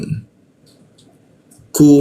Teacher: huruf ku di siku tenggorokan lidahnya kita turunkan. Ada hembusan udara ketika membaca ku